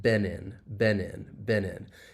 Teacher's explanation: we link the final consonant sound of one word with the beginning vowel sound of the next word. So, Benin, you can hear me link that final N sound, that N sound with the preposition. · you can hear me link that final N sound, that N sound with the preposition. It's almost like I'm moving that over to the next word. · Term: linking